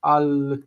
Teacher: the stress moves to the end of the word with a vocalic ending. Al becomes ala.